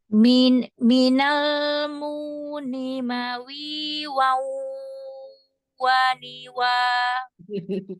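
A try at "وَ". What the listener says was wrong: Mawi itu udah nggak mawi lagi, itu udah lidahnya nggak mau bibirnya kok lidah mulus ya. waniwa. Mulai apa? Mulai lingkaran kecil. Waniwa. Harus dipaksain gitu. Nah, wanya jangan malas-malas.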